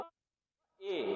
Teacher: जब आप ए बोलोगे फिर से हमारे जीभ के आगे का हिस्सा यूज होगा, छोटा ए और बड़ा ए। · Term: अग्रस्वर